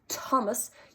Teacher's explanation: you will feel a massive puff of air come out when you say thomas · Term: aspirated